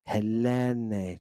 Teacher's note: Notice that I'm putting the extra emphasis on the accented epsilon. That just means I'm drawing it out.